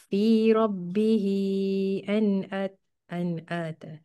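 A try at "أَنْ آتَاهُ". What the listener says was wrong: En an jangan dengung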